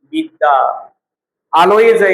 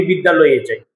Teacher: বিদ্যা আলয় আলোয় আর উচ্চারণ হয় না তখন বিদ্যালয় হয়ে যায় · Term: সন্ধি